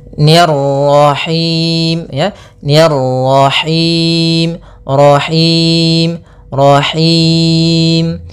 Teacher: mani kemudian diil lafal nahim nahim nya tipis kemudian rnya lagi tebal karena di sini ro tafkhim · ro-nya lagi tebal karena di sini ro tafkhim, yaitu ro yang berharakat tasydid.